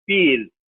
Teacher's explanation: pure vowels are single sound, are monophthongs, one sound, like long E